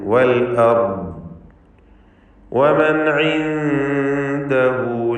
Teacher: സാക്കിനത്തായ നൂനിന് ഇദ്ഹാർ ഹൽഖി നൽകി, മണിക്കാതെ വെളിവാക്കണം. ശേഷമുള്ള അക്ഷരം ഹൽക്കിൻ്റെ ഹർഫുകളിൽപ്പെട്ട ഐനായതുകൊണ്ടാണ് ഇദ്ഹാറിന് ഇദ്ഹാർ ഹൽഖി എന്നുകൂടി പേര് പറയുന്നത്.